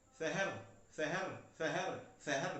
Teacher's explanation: साथ ही साथ आपको ये तालु तालु से बोलने वाला जो है हमारा व्यंजन है, तो श बोलना है आज के बाद हमेशा